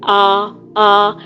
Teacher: تو الف منہ کے خالی حصے سے ادا ہوتا ہے